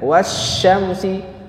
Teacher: wasyamsi lamnya melebur ke dalam huruf syin